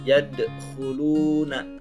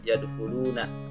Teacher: pada huruf dal sukunnya itu ada pantulan, yadkhuluna, tidak yadkhuluna.